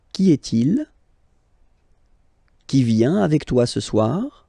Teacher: you will have to raise your voice a little bit at the end of the question